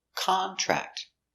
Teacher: Here, contract is a noun. So the stress on the first syllable, contract.